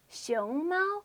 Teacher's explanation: It's pronounced 熊猫 with a second or rising tone and a first or high tone.